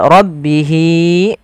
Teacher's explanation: Ini berbentuk ya kecil. Panjangnya untuk mad silah qasirah yaitu sepanjang 2 harakat sebagaimana mad tabi'i